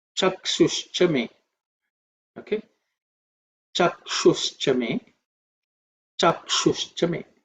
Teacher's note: Chakshush chame Chakshush chame The aksha is the sha is cerebral sha. So, that tongue should actually point upwards.